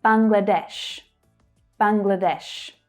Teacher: The main stress here in English is on the final syllable, but notice that the first syllable also has a stress as well.